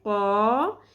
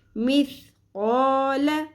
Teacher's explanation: قاف زبر الف، ایک الف کے برابر کھینچیں گے، حرف مدہ ہے